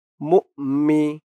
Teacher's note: নুন দিয়ে মিম ধরবে ইদগামে বাগুন্না গুন্না হবে